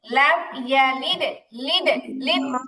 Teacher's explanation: কলকলার উচ্চারণটা কি হবে এখানে জেরের কাছাকাছি হবে কিন্তু তাসদীদের মতো আবার শক্ত হবে না লাম ইয়ালিদ এরকম শক্ত হবে না নরম করে উচ্চারণ হবে লাম